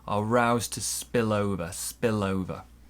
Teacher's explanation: we link the l and the o